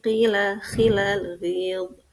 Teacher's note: isti'la jadi lemah ketika harakat kasrah ketika berada pada 3 huruf, yaitu ghin, kha, qaf.